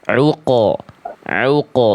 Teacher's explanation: Lalu qof sukunnya harus juga tebal ya.